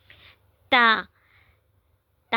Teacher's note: ता का मखरिज जुबान की नोक और सनाया उलिया की जड़ · تا کا مخرج زبان کی نوک اور ثنایا علیہ کی جڑ۔ ثنایا علیہ کہتے ہیں جو آگے کے 2 دانت ہوتے ہیں جو تھوڑے لمبے ہوتے ہیں، ان کو ثنایا علیہ کہتے ہیں۔